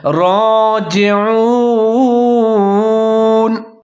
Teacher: را کو اس کے اوپر کھڑا زبر ہے، ایک الف کے برابر لمبا کر کے پڑھیں گے اور اس کو موٹا کر کے پڑھیں گے، پر کر کے پڑھیں گے